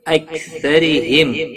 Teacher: را زیر کی وجہ سے باریک پڑھا جائے گا